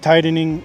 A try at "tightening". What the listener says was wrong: We cannot pronounce the T as a fast D. The word is pronounced two different ways. You can say tighten and make a real T, tighten, or you can make a stop T, tight, and then go to the N, tighten, tightening.